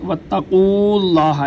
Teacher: قاف کو لفظ اللہ کے لام کے ساتھ ملائیں گے